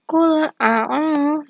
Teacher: dhamma bertemu dengan waw sukun, maka hukum bacaannya yaitu mad tabi'i, dibaca panjang 2 rakaat